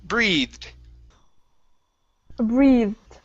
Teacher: Next up, we have breathed. Okay, so this is a long E and a voiced TH with a D sound at the end.